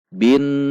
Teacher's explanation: Karena huruf nun berarti dibaca gunnah dengung 2 ketuk. Harus dibaca dengung, harus dibaca panjang.